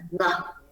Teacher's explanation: So just let the airstream go through the nasal cavity, and you can make this by the closure between the back of the tongue raising and touching the velar. Có nghĩa là để tạo ra âm ngờ và đường mũi, nó là âm mũi mà, thì mình sẽ có cái việc đóng lại ở chỗ gì? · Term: nasal sound